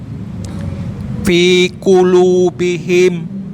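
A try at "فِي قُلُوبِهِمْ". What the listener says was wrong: Fi qulubihim. Coba fi-nya bibirnya jangan dirapetin. Pakai bibir aja. Fi qulubihim sekali lagi. Huruf qaf-nya dilatih lagi ya Pak ya.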